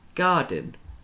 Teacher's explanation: the beginning is stressed, isn't it? The dun is quite short at the end, but the gar is the thing that we say more